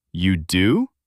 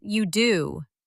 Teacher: But be careful with the intonation. Your voice should go up at the end to show it's a question. You do? With rising intonation. · With rising intonation. Not you do with flat tone. That's a statement. But you do with rising tone. That's surprise.